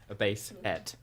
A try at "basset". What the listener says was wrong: Bass, yeah, basset. But it's E-T. It's not E-T-T.